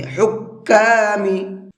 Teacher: ہا کو حلق سے نکال کر کے پڑھیں گے، اور کاف کے اوپر تشدید ہے، اس کو ڈبل کر کے پڑھیں گے